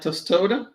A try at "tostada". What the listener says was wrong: No, it's tostada. There's an A there.